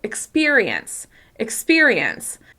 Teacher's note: In the word experience, the second syllable is the clearest, the easiest to hear because it's the longest, the loudest, and the highest in pitch. However, the other unstressed syllables, you can still hear the vowel sounds.